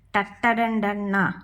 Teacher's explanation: ട തൊട്ട് ന വരെയുള്ള അക്ഷരങ്ങൾ ഇവ നമ്മൾ പറയുന്നത് മൂർധാവ് കൊണ്ടാണ്. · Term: മൂർധന്യം